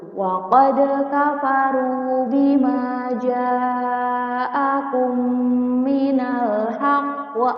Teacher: Cara membacanya dengan memasukkan bunyi huruf mim sukun ke huruf mim selanjutnya yang hidup tersebut dengan disertai dengung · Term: idgham mimi